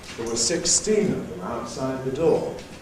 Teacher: in English we can do this with two adjacent stresses on the two syllables of 16, whereas the other words, the function words, are unstressed.